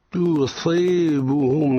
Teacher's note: تصيبهم التاء مرققة والصاد مفخم